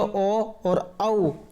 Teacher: ये जो ओ और औ जो वर्ण होते हैं ये कंठोष्ठ से बोले जाते हैं, कंठ और ओष्ठ से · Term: कंठोष्ठ वर्ण